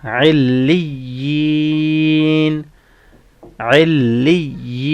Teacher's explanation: عین لام کسرہ عل، لام یا کسرہ لی، علی، یا کسرہ طویلہ یی، علی، نون فتحہ نا، علیین، علیین. یہاں پہ کسرہ طویلہ ہے، اس کو اس لیے ہم لانگ کر رہے ہیں، اور سٹاپ ساؤنڈ ہوگا علیین، علیین.